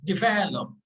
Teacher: the stress is on uh the second syllable